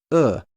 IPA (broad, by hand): ʊ